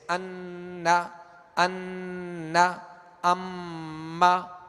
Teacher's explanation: ناک میں آواز لے جا کر ایک الف کی مقدار اسے ٹھہرائیں گے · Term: غنے